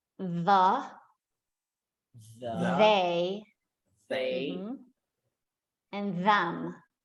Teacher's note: so that is the voiced TH sound where you can actually feel the sound when you make it.